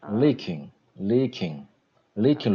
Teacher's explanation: uh, leaking, first syllable, First syllable and long E sound, and king is the uh, short E sound